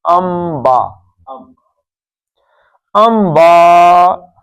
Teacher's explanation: نون ساکن کے بعد با آ جائے تو نون نہیں پڑھتے، کیا پڑھتے ہیں؟ میم پڑھتے ہیں. نون ساکن کے بعد با آ جائے تو نون نہیں پڑھتے، تو ان با نہیں پڑھیں گے.